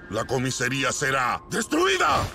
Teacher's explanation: cambia la primera A de la palabra por una E